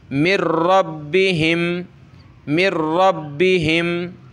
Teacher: نون ساکن کے بعد کوئی حرف آئے جس پر تشدید ہو تو وہاں نون ساکن کو نہیں پڑھتے، یہاں ڈائریکٹ میم کو را سے ملائیں گے